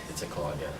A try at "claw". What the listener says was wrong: Open your mouth when you're talking.